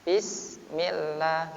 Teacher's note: harokat kasrah menghadapi sin mati, maka sinnya dibaca tipis.